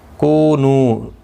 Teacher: کو واو مدہ ہے، نو واو مدہ ہے، دونوں کو ایک ایک الف کی مقدار کے برابر کھینچ کر پڑھیں گے